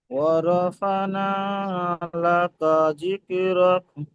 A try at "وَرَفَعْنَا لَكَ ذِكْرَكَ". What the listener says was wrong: মাশাআল্লাহ, আইনের উচ্চারণটা আরেকটু চেপে করবেন। ওয়ারফা'না, বলেন।